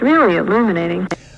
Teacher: of breathiness there at the tail end but it's just like the f-zero descends and it doesn't go anywhere from there